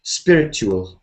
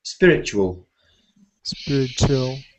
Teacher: across okay you don't need to say spiritual so the TU the T sound can turn into CH spiritual but people don't usually say it like T they say